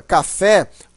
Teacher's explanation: a palavra primitiva café a sílaba mais forte é o fé que é a sílaba tônica